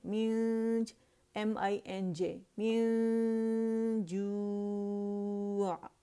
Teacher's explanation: جیم کا مخرج کیا ہے؟ وسط اللسان